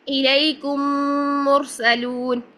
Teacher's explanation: 2 حرکات کے جتنا غنہ ہوگا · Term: ادغام مثلین صغیر